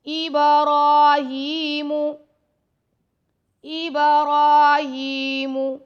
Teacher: را پر کھڑا زبر ہے, ہا کے نیچے کھڑا زیر ہے, ان دونوں کو 2 سیکنڈ تک لمبا کریں گے